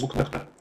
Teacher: This ch becomes k again, is restored to its historical original if followed by a voiceless consonant. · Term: guttural k